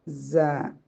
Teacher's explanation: സായി സ നാവിൻറെ തുമ്പും താഴെ മുൻപല്ലിന്റെ മുരടും സായി സ എന്നാൽ അത് ഉച്ചരിക്കുന്ന സമയത്ത് നമുക്കൊരു ചൂളം സൗണ്ട് വരേണ്ടതുണ്ട്